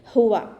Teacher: നാവിൻ്റെ ബാക്ക് മുകളിലേക്ക് പൊക്കി കൊടുക്കുക കേട്ടോ. ഹ എന്നുള്ള അക്ഷരത്തിൻ്റെ സൗണ്ടിനെ ഹംസയുടെ സൗണ്ടായി പോവാതെ നോക്കുക. ഉവ എന്നൊക്കെ ഓതുന്നവരുണ്ട്.